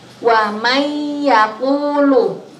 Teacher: Apabila ada nun mati atau tanwin bertemu dengan salah satu 4 huruf yang tadi kita sebutkan bersama-sama, maka cara membacanya adalah dengan memasukkan dengan cara mendengung · Kalau kita baca di Al-Qur'an, waman yaqulu. Di nunnya itu nunnya sukun, berarti nun sukun bertemu dengan ya. Jadi cara membacanya dimasukkan lalu didengungkan. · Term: idgham bi gunnah